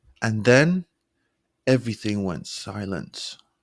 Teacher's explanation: your pitch lowering to create suspense · your voice lowering on silence